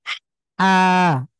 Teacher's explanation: আর একটু কণ্ঠে চাপ দিয়ে আমরা উচ্চারণ করব, এটা হলো কণ্ঠবর্ণ এবং হলক থেকে উচ্চারিত হবে